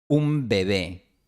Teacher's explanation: en este contexto el fonema B se realiza con una B dura. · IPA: ['um be'βe]